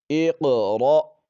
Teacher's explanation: پر قلقلہ کریں گے جی ایق ایق را حمزہ زبر را ایق را جھٹکے سے پڑھیں گے حمزہ کو